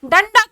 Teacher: अनुस्वार की जगह पर हमारे मुख से आधे ना की जो है अधे ना का उच्चारण होगा